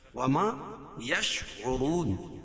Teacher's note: وما یشعرون، اور واو ساکن سے پہلے پیش ہو تو واو مدہ، اور را کے اوپر پیش ہے تو را کو پر پڑھیں گے۔ وقف کی صورت میں یہ مد عارض وقفی ہوگا، اس میں طول توسط قصر تینوں جائز ہے۔